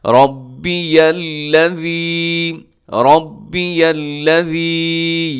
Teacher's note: آگے جو یا ہے اس کو لام کے ساتھ ملائیے گا